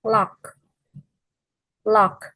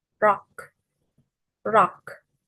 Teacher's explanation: Full sound is made when the tip of the tongue touches the alveolar ridge. Air flows around the sides of the tongue and not down to the center. The sides of the tongue are low, allowing the air to escape laterally. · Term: alveolar lateral